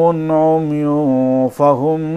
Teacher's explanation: تنوین کے بعد فا ہے، نون کی آواز ناک میں چھپ کر ادا ہوگی۔ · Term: اخفا